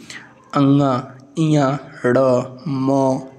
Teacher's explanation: आता है इसी को हम लोग कहते हैं अनुनासिक इसमें हवा इसके उच्चारण में हवा नाक और मुंह दोनों से निकलती है